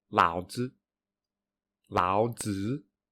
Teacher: you can hear that the second syllable is weaker than the first syllable, and it is also weaker than when it is pronounced on its own